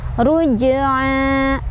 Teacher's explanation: Rabbika ruj ada qalqalah sughra karena ada huruf qalqalah yaitu jim yang sukunnya sukun asli. Cara bacanya pantul dan pantulannya ini kecil aja. Ruj'a. Di sana ada mad asli karena ada fathah berdiri di atas huruf ain ya.